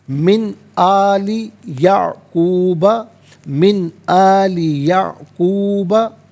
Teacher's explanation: व यरिसु मिन आली याकूबा, मिन में नून साकिन है, इसके बाद आली में आप देखें हमज़ा है, तो नून साकिन के बाद हमज़ा आ रहा है, हरफ हल्की आ रहा है, तो नून साकिन को यहाँ पर इजहार के साथ पढ़ा जाएगा, इख्फा या गुन्ना नहीं किया जाएगा